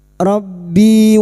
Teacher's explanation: Rabbi kasr diikuti ya sukun dua harakat mad thobi'i.